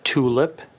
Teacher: I'M STARTING TO MAKE WAY FOR THE U IN TULIP EVEN AS I'M SAYING THE T.